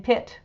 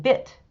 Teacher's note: the P in pit or the B in bit result from the lips coming together